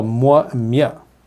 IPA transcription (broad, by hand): mʷ, mʲ